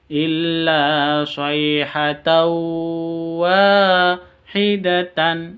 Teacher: Tanwin bertemu dengan wawu, bacaan idgham bi gunnah. Caranya masuk tahu seperti itu disertai dengung 3 ketuk.